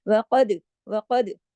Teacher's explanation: दाल पे कलकला, काफ मोटा